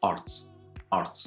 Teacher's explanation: Tiene que ser la A para atrás, corta.